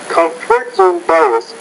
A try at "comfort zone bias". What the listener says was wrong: I'll say comfort zone bias. So when you're saying those 3 words, put equal emphasis on all of those. So comfort zone bias.